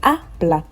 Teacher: Now you can notice that I'm stressing the a, bla. I am not saying habla.